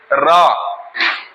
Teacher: जीभ मुड़ रही है, तालू में रख के मुड़ रही, मूर्धन्य लिखा है, ल और र, है ना, लिखा है कि नहीं?